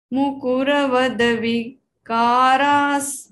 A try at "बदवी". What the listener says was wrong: आप बद पे रुक जाते हैं, करना ना, तीनों को एक साथ बोलना, बदबी।